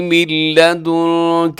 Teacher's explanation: آگے قال رب هب لي من لدنك، من لدنك یہاں نون ساکن کی بعد لام ہے، یہاں ادغام ہوگا لیکن یہاں پہ غنے کے بغیر ہوگا